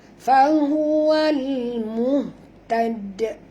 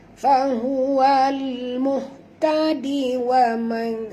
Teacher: Kalau dia berada di hujung ayat ni, kita matikan, maka dia jadi qalqalah kubra. Tetapi kalau kita baca wasal ataupun terus, tak ada qalqalah ya.